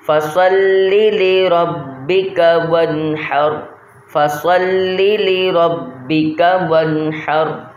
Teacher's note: پہلا لام پڑھتے کے ساتھ ہی اس کے ساتھ دوسرا لام فوراً ہی پڑھ لینا ہے